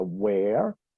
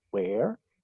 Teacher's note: Que se pronuncia where, con un sonido abierto de la E